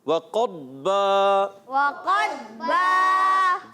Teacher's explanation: وعقبا نہیں، وقضبا، قاف کی آواز ضاد کی آواز، قاف کو ضاد سے ملائیں گے